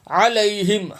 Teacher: عین ادا کہاں سے کرنی ہے؟ حلق سے، عین علیہم، حلق سے ادا ہوگا، عین علیہم۔